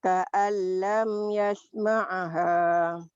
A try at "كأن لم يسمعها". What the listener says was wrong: Bukan ka'an lam yasma'aha. Ka'an lam yasma'ha. Ainnya mati.